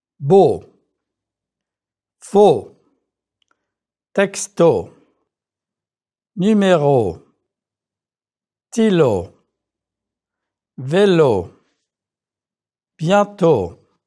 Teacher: O is a very clean sound in French. Make sure that you don't let that W sneak in. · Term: French closed O